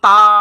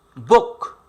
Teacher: তাটা আপনি দীর্ঘ সময় উচ্চারণ করতে পারবেন, কিন্তু বোকটা দীর্ঘ সময় আপনি উচ্চারণ করতে পারবেন না, থেমে যাবে।